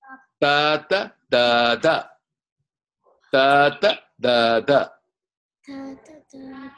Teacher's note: the tongue is touching the teeth, front teeth